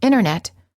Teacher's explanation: The T after an N or an N sound is often silent. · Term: T after N